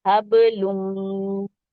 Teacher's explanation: لام اور میم کو جوڑیں گے، لم ہو جائے گا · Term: ادغام